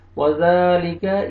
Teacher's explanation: کاف کو باریک کر کے پڑھنا ہے اور زال کو نرمی سے ادا کرنا ہے تاکہ زا میں مکس نہ ہو